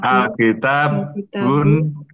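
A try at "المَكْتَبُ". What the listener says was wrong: Ada mimnya. Ada mimnya nih. Ada mimnya berarti. Al-Maktabu.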